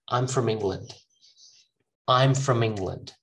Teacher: instead of all you just use a schwa from